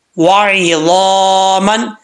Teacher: زبان اوپر کی طرف اٹھے گی تو یہ پر پڑھا جائے گا، یعنی موٹا پڑھا جائے گا. وعظاما، جب تک زبان اوپر کی طرف نہیں اٹھے گی یہ صحیح مخرج سے ادا نہیں ہوگا.